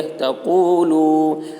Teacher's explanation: واو ساکن سے پہلے پیش ہے، واو مدہ ہوا، اس لیے واو مدہ کو ایک الف کے برابر کھینچ کر پڑھیں گے